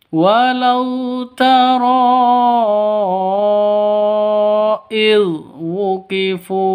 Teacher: Jadi yang ini kalau ketika ada mad bertemu dengan hamzah di dua kata, panjangnya itu boleh 2, boleh 4, boleh 5 ketukan. Tidak boleh namanya ini mad jaiz, bukan mad wajib, tapi mad jaiz munfasil karena bertemu dengan hamzah di dua kata.